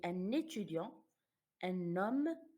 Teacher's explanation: on insiste sur le N. On dit un étudiant, un homme. On prononce le N. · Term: liaison